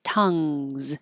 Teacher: the back of your tongue goes up very high and touches the top of the back of the mouth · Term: NG combination